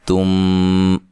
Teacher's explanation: تا کو باریک پڑھیں